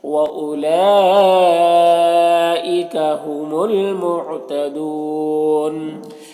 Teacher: मद्द मुत्तसिल है, इसे 3 से 4 अलिफ के बराबर खींच कर पढ़ेंगे